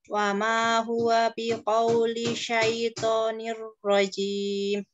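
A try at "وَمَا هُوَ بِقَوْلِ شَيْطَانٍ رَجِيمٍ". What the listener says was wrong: Otonya kurang tebal. Syaitoni, syaitonir rajim.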